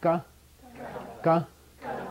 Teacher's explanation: what's closing is the back of your throat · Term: guttural